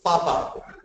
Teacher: the sound will be created only when the upper lip and lower lip is joining together